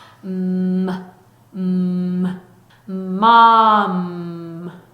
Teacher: 유지가 되고 있죠. 성대는 울리고 있죠. 그래서 유지되는 울리는 소리 M입니다. 자, 이 소리는요. 하고 유지하시다가 입술을 붙여서 하고 유지하시다가 입술을 떼면서 자연히 끝에 하는 소리가 들어가죠.